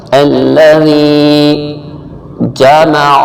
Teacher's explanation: عین حلق کے درمیان سے، لیکن اس کو کھینچنا نہیں ہے۔